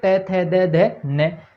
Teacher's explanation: जीभ दांतों का स्पर्श करेगी, दांतों का स्पर्श। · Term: तयवर्ग